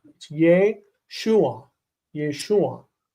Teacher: the name Yeshua has furtive patach, and the first syllable is full